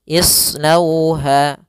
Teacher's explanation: Maka cara menyempurnakannya adalah memonyongkan bibir pada huruf waw agar sempurna makhraj huruf wawnya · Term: bacaan lin